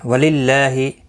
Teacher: اللہ کا لام زیر کی وجہ سے باریک پڑھا جائے گا. اس کے اوپر کھڑی زبر بھی ہے، ایک الف کی مقدار کے برابر کھینچ کر بھی پڑھیں گے.